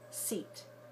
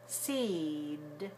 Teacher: length of time it takes you to say the e so when it ends in a voiceless consonant like seat it's shorter when it ends in a voiced consonant like seed it's longer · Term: vowel